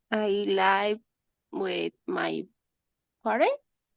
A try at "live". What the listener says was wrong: It's not life, it's live.